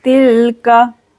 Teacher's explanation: जल्दी से पढ़ेंगे, तिल्का। यहाँ अलिफ को नहीं पढ़ना है। जाल के ऊपर 2 ज़बर है, इसके बाद काफ आ रहा है, रुफ़े इक्फ़ा, करेंगे इक्फ़ा।